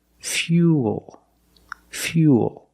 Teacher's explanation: when you link the oo plus the dark L, the mouth opens a little bit, but it's not a real syllable.